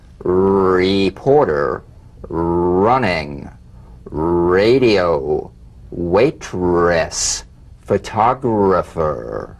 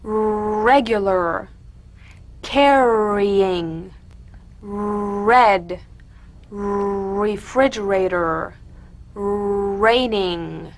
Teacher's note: feel the strongly vibrating R on the hard palate.